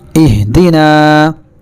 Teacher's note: یہ ہا قلقلہ کے 5 حرفوں میں سے نہیں ہے، اس لیے اس کی آواز اس کے مخرج سے ٹکر کھا کر الگ نہیں ہوگی بلکہ چپک جائے گی۔